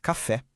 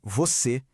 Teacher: O acento agudo, que a gente usa para sons abertos, tipo em café. O circunflexo, o famoso chapeuzinho, para sons fechados, como em você.